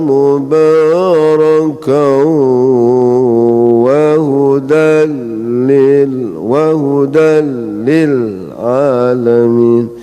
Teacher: Kemudian lagi ada tanwin lagi tapi depannya lam, ini idgham tapi bukan gunnah. Hanya suara lam saja, enggak usah didengungkan. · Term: idgham bila gunnah